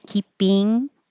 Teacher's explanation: And instead of keeping with an ing that has the back of the tongue high